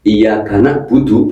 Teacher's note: Kalau dibaca iyaka budu berarti merubah huruf ain menjadi hamzah.